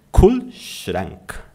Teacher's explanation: com R na ponta da língua